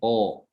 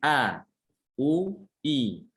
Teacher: arah suaranya itu ke bawah, ya, tidak ke atas, sehingga suaranya itu yang dihasilkan adalah suara tipis, bukan tebal. A, bukan O, tapi A, U, I. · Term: istifal